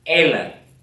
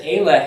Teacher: ela is accented on the first syllable as we know that the default stress position in hebrew is the last syllable